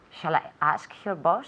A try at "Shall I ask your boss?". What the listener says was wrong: Perfecto.